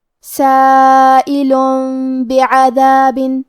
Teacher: کلمت بعذاب با حروف القلب میں سے ہے، اور قلب کا معنی ہے بدل دینا، تو ہم یہ تنوین کو میم میں بدل کے اور غنہ کے ساتھ یہ حکم کو ادا کریں گے · کلمت بعذاب حرف العین کی ادائیگی حلق کے درمیان والی حصے سے ہے